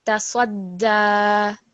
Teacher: with a shadda, remember, it's like having two dals next to each other. So it's you just have to put extra stress on it.